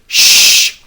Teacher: if you take your hand and put it on your throat and make this noise sh you won't feel any vibrations in your throat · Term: sh sound